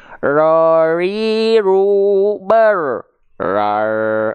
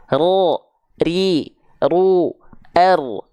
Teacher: ra punya sifat takrir maka dia dilafalkan dengan getaran yang malah hilang jadi kayak orang bule ro ru ber R